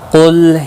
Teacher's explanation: قاف موٹا پڑا جائے گا، حروف مستعلیہ میں سے ہے